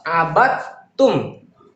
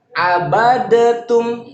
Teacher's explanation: Abatum, bukan abadatum. Huruf dal melebur ke huruf ta secara sempurna. Ciri-cirinya huruf keduanya ada tasdidnya. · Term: idgham kamil